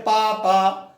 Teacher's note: पा, फा, बा, भा, मा जब उच्चारण करते हैं तो भी होंठ हम हमारे दोनों ऊपर नीचे स्पर्श करते हैं। जैसे हम कहते हैं पा, पा, तो होंठ दोनों ऊपर नीचे के छूते हैं कि नहीं? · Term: पवर्ग